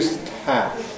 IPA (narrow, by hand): stʰæ